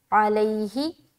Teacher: علیہ، عین زبر ع، لام یا زبر لی، حاضر ہی، علیہ، یہاں پر یا ساکن سے پہلے زبر ہے، نرمی کے ساتھ جلد ادا کرنا ہے